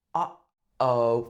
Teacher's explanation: It sounds like your voice is getting cut off in the middle and then continuing again. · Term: glottal stop